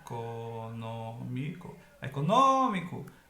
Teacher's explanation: a antepenúltima sílaba é que é a mais forte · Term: proparoxítona